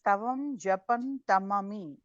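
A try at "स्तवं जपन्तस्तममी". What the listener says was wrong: That visarga becomes is, so Japantas tamami.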